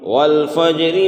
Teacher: را میں زیر ہے، یہ را باریک ہوگی۔ وقف کی صورت میں یہ را پور ہو جائے گی۔